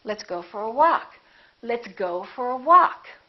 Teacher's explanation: Go gets some stress, but walk gets a lot more stress.